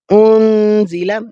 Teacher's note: فمن، اب یہاں پر بھی دیکھیں نون جزم ہے، نون جزم پر جیسے ہم نے انزل اخفا کیا تھا، اس پر بھی ہم اخفا کریں گے، ناک کے اندر آواز کو چھپائیں گے